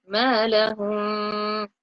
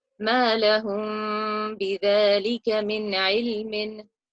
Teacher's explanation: Ikhfa means to hide and nasalize. So I'm hiding the Meem between my lips and nasalizing it instead.